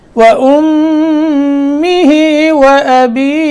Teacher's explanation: یہاں جو میں مد کر رہا ہوں یہ مد عارض کہلاتی ہے. تو یہ مد جو ہے یہ برابر ہوتی ہے جیسے آیت کے ختم پہ مد ہوتی ہے، اور جتنی یعنی جب تک ہم قرات کرتے جائیں گے اس مد کی مقدار کو ایک ہی طرح رکھنا ہے.